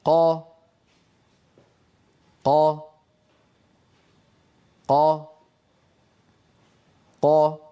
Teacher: انظروا إلى الصورة التي على اليمين، كيف أن الصوت ينحبس خلف مخرج القاف وهو أقصى اللسان مع الحنك اللحمي، ثم ينطلق الصوت. انظروا: قا. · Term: قاف مجهورة فصيحة